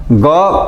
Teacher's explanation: कवर्ग का उच्चारण होता है कंठ से